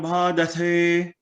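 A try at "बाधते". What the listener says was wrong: Badhate, Ba is Alpa Prana, Dha is Mahaprana, Badhate.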